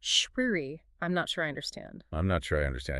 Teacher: In many types of English, especially American English, that R sound at the end of sure connects to the I. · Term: linking